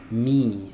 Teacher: huruf mim adalah huruf yang keluar dari dua bibir yang dirapatkan ya. Tapi hati-hati saat kita mengucapkan huruf mim itu ee kita merapatkan bibirnya ini biasa saja, enggak perlu terlalu ditekan ya.